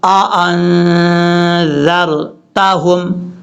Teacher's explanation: یہاں پر دو حمزے ہیں، ایک حمزہ اوریجنل شکل میں ہے، دوسرا حمزہ الف کی شکل میں ہے، دونوں کو الگ الگ کر کے پڑھنا ہے